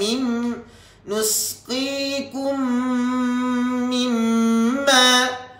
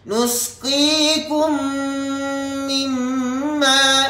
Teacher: mim mati bertemu dengan mim yang bersabdu. Okey, mim nusqikum mimma. Maka dibaca dengan dengung kadar 2 harakat, iaitu adalah idgham mithlain.